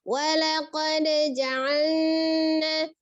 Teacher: Ya, atau misalnya seperti ini, lam sukunnya seperti langsung diidghamkan dengan nun, maksudnya walaqad ja'alna, jadi kurang sempurna lamnya itu, ja'al tidak terdengar lamnya, jadi seperti langsung meloncat ke huruf nun gitu ya, jadi seolah-olah dia dilebur, ditasdidkan ke huruf nunnya, padahal dia ada lam di sini.